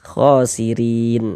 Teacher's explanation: Huruf ra memiliki harakat kasrah. Maka huruf ro ini kita baca tipis tarkik ya